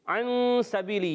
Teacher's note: نون سائن کے بعد سین حروف اخفاء میں سے اخفاء کریں گے، غنہ کریں گے. سبیلی میں سین سیٹی کے ساتھ باریک ادا ہوگا.